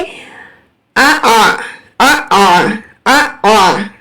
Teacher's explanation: تسہیل کا مطلب ہے نرم کرنا۔ آواز جو ہے وہ نہ تو حمزہ جیسی ہو اور نہ ہی الف جیسی ہو۔ جیسے ہی ہم حمزہ کو ساکن کریں تو جھٹکا آتا ہے، لیکن جھٹکے سی آواز بھی نہیں آنی چاہیے